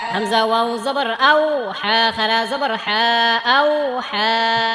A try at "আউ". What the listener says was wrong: এটাকে আও আও বলা যাবে না আউ আউ ঠোঁট একদম ঠোঁটের আগা থেকে উচ্চারণ ঠোঁট থেকে উচ্চারণ করতে হবে আও আও বললে মুখের ভিতর থেকে উচ্চারণ হবে আর ওয়াও এর মাখরাজ হচ্ছে ঠোঁট দুই ঠোঁট হইতে ওয়াও বা মিম এই তিনটা হরফ উচ্চারিত ওয়াও ওয়াও দুই ঠোঁট থেকে উচ্চারিত হয় যদি আও আও বলেন তাহলে মুখ থেকে উচ্চারিত হবে মাখরাজ সম্পূর্ণ আলাদা